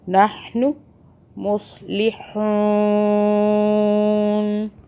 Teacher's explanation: ہا کو حلق کے وسطی جگہ سے ادا کریں